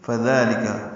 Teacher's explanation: فا کو جلدی پڑھنا ہے، ذال نرمی سے پڑھنا ہے، دو حرکات لمبا کرنا ہے، لام کاف باریک ہے